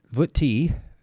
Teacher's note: I imagine that this vutti has lengthened the I just for the meter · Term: long I